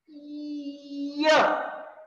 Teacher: उच्चाराची सुरुवात स्वरासारखी होते पण शेवटी व्यंजनासारखा · त्याच्यावरून घसरून पुढे येते परत घसरगुंडी सारखी आणि मग इय असं सुरुवात इ ने करतो आपण पण ऐकायला येताना य ऐकू येतो आपल्याला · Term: अर्धस्वर, अर्धस्वर य